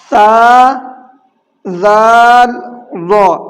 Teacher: زبان کی نوک ثنایا علیہ کے کنارے سے مل کر ادا ہوتے ہیں